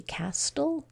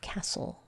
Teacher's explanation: have the consonant El syllable type and we say castle so we don't say the T we don't say the E the L is the only one that gets sounded out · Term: the t is silent